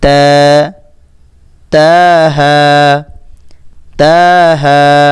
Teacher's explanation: জিহ্বার আগা সামনের উপরের দাঁতের গোড়ার সঙ্গে লাগাইয়া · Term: তা হরফটি